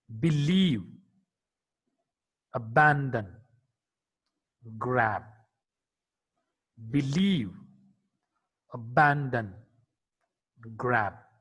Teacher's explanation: B is a voiced bilabial plosive consonant.